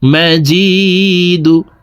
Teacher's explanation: জি এখানে এক আলিফ টান, জেরের বাম পাশে জজমওয়ালা ইয়া মদার হরফ, ডান দিকের হরকতকে এক আলিফ টানিয়া পড়িতে হয়। তো এই জেরওয়ালা জিমটি জজমওয়ালা ইয়ার সাথে এক আলিফ টেনে পড়ব।